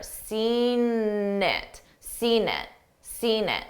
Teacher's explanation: I use that n that n Sound to connect the two words together seen it seen it seen it so you hear a n